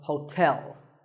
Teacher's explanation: there are two syllables ho and tell like the English word tell as in tell me the stress is on the second syllable